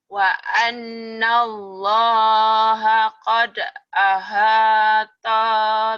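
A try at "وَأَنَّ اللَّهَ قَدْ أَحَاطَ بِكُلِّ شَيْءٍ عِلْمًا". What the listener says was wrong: Pendek. Ahata bikul. Ahata bikul. Taunya pendek. ahata. Wa annallaha qad ahata bikulli syai'in ilma.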